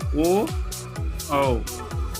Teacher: कंठ और ओठ से बोले जाने वाले स्वर ओ औ जिसको हम कंठोस्थ कंठोस्थय के नाम से जानते हैं।